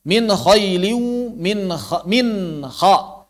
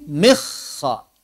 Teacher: Jangan engkau tasdidkan huruf nun. Yang mesti dibaca izhar.